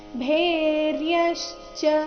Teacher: ಇಲ್ಲಿ ಭೇ ಮಹಾಪ್ರಾಣ ದೀರ್ಘ ಚೆನ್ನಾಗಿ ಬರಬೇಕು